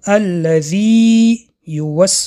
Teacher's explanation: کلمه الذی یوس حرف ی اول حرف مد است یعنی الذی در اینجا اول حرف مد است آواز ای کشیده میشود